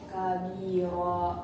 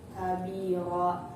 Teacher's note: Contoh kabiro, di situ ada mad alif didahului dengan huruf ra yang berharokat fathatain dan diwakafkan, maka cara bacanya fathatain tersebut diganti menjadi huruf fathah dan dibaca panjangnya satu alif atau dua harakat. Kabiro.